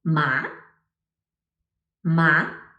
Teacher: Now let's move on to the second tone. The second tone is rising like a questioning intonation in English, pitch climbing a hill.